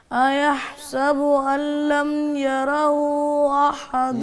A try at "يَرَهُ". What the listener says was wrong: یارہ را کو موٹا کرنا ہے. یارہ. تھوڑا سا مد کو اور کھینچو.